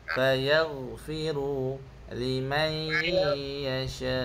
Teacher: Fagfiru liman yasya. Syak tu kena baca empat ataupun lima harakatlah. Mad wajib muttasil.